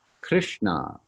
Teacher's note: krishna so the dot under the s is an sh sound the n with the dot under it the tongue stays in that spot back by the center of the roof of your mouth